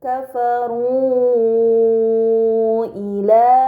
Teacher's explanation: Ini dinamakan mad munfasil, maka harus dibaca panjang selama 4 atau 5 harokat